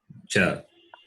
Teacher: Alpa is little. So alpa prana, a little amount of air is expelled in pronouncing the letter. Therefore, alpa prana.